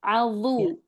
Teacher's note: Dzalikum yu'adzu. Dha-nya angkat isti'lahnya, itbaqnya juga diangkat.